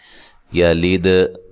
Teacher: دال پہ قلقلہ کرنا ہے، ہلا کر پڑھنا ہے